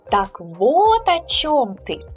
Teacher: So we always put emphasis on вот.